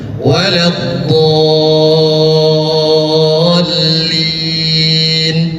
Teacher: Jangan terlalu lama karena lam bertasydid, tidak memakai gunnah.